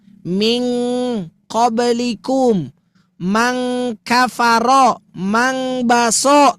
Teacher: yang bunyi ting itu ya, itu cuman dua, qaf dan kaf, ada ng-nya. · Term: ikhfa abad